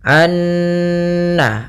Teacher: Ah, ada bacaan idgham bighunnaah yang di mana dia di sini kita harus membacanya nunnya masukkan ke nun kedua dan disertai dengan gunah